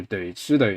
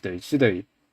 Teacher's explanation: the second syllable rising does not happen. It's just a regular flat tone. So 對 住 對 instead of 對 住 對.